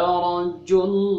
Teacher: Dalam lafaz Allah dibaca tebal loh gitu ya. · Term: tafhim